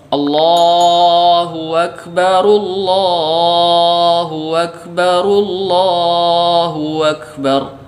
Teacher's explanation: kesalahan berikutnya yang sering terjadi adalah mengganti hamzah dengan waw.